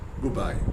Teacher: When you say good plus by, many people pronounce it as goodbye, but the native speakers will pronounce it as goodbye. The d becomes b. This is called assimilation.